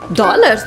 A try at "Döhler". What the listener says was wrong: Dele. Quando o O tem o trema, tem som de E. Então a gente lê dollar, mas a pronúncia correta é Deler. Deler.